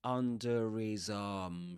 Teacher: He does pronounce the r there under his arm. Because right after it comes a vowel sound.